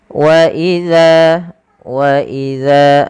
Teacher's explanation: Kita panjangkan dza nya dua harakat karena dia ada bacaan mad thabi'i